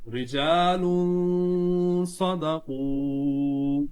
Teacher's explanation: صدقوا میں جو واو ہے، واو ساکن ہے، اس سے پہلے پیش ہے تو واو مدہ ہوگا، ایک الف کھینچ کر پڑھا جائے گا